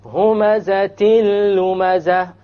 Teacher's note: You didn't hear the N sound, it was dropped.